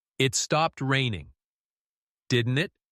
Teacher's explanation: Say, stopped. Neatly, then raise your tone on, didn't it?